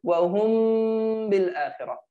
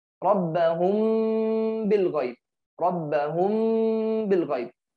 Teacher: It has one letter that is ba. If the constant Mim followed by ba in two words only, then nasalized concealment is necessary. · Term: lip concealment